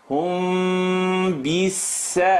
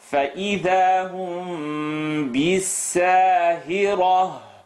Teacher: This is rule number 4 of rhythm. When mim sukoon is followed by ba, the lips vibrate.